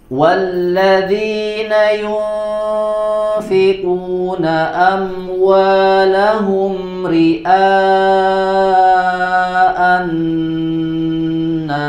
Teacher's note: ro yang dibaca tipis karena dia berharokat kasroh